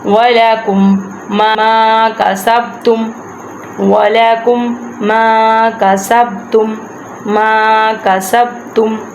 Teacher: وَلَكُمْ کہ یہ والی میم ساکن والی میم کو ہم نے چھوڑ دینا ہے، یہ کاف پیش جو ہے ہم نے ڈائریکٹ اس کو تشدید والی میم کے ساتھ اٹیچ کرنا ہے